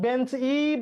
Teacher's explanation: শব্দের শেষে একটা ই ধ্বনির আগমন ঘটেছে